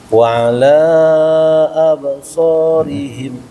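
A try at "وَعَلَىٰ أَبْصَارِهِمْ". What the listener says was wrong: Alanya panjangin. Majaiz. Wa ala panjang.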